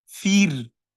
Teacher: When Kasra comes before Ra, it is considered to be Tarqeeq.